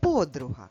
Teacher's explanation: В українській мові ми говоримо подруга, ставлячи наголос або наголошуючи звук О.